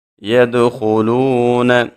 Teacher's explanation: دال حروف قلقلہ میں سے ہے، اس کے اوپر آواز کو ہلا کے پڑھیں گے، اور خا موٹے حروف میں سے ہے، اس کو ہم خوب موٹا پڑھیں گے۔